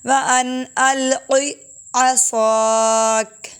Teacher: فَلَمَّا، اگر یہاں پر نقطے والا کاف ہوتا تو میں اس کو ایسے پڑھتی عَصَاكَ کلکلا کر کے، لیکن کاف باریک ہے، کلکلا نہیں ہوگا